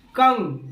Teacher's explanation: जब आप कंगन बोल रहे होते हो, खास करके कंगन का क अनुस्वार बोल रहे होते हो, कंग यानी मुंह से भी आवाज निकल रहा है, नाक से भी निकल रहा है। इसका मतलब ये हुआ कि उसका उच्चारण जो होता है मुख और नाक दोनों से होता है।